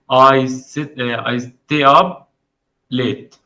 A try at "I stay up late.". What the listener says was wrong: I stay up late. أنا مش عايزك تقرأ قطعة قطعة، أنا عايزك تقول جملة على بعضها. I stay up late.